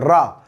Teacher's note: रा जो होता है जीभ थर्राती है ऐसे, तो ऐसा लगता है लुढ़क के बाहर आ रहा है। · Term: लुंठित